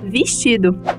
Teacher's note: a sílaba vez em vestido, que pode ser falada com a vogal alta I